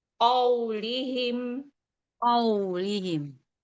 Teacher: Tapi bukan ka, tapi ko.